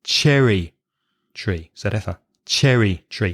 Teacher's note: so you'd stress the first word